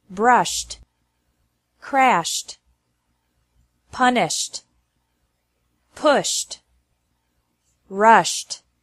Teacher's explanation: ED is pronounced like T after verbs ending with an SH sound.